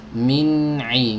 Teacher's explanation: Ya, jangan langsung dilepas. Tempelkan dulu ujung lidahnya ini dengan gusi. Tahan dulu sebentar. Langsung masuk ke ain.